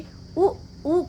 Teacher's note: ओष्ठ से उ का उच्चारण हो रहा है